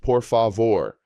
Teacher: The stress falls on the final syllable vore. This phrase is absolutely crucial and will make every request more polite and respectful.